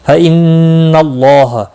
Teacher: نون مشدد پر گنہ ہوگا، اللہ کا لام زبر کی وجہ سے پر پڑا جائے گا۔ اس کے اوپر کھڑی زبر بھی ہے، ایک الف کے برابر کھینچ کر پڑھیں گے، ح کو کھینچنا نہیں۔